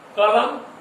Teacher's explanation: कलम में ल पर अधिक जोर है, क पर कम जोर है, म पर भी कम।